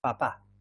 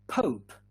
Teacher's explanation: in english um the explosion it's much bigger than in spanish